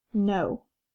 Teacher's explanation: since this syllable is open, the O says its name or its long sound. So this word is N-O, no.